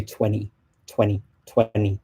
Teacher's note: so you almost get rid of that t